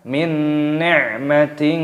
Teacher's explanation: kasrah tanwin bertemu dengan huruf ta, hukumnya dibaca ikhfa, disamarkan